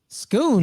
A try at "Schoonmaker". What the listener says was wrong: No, Schoon. It's a Schoonmaker. Don't say the H. It's just Schoonmaker.